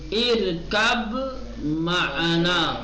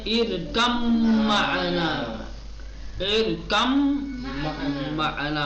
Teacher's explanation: با کو حذف کر دیں گے، میم کو تشدید دے دیں گے، ادغام کے ساتھ پڑھیں گے